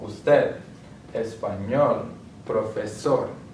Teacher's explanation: palabras agudas, they have the word stress on the last syllable